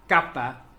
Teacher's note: K is a velar stop.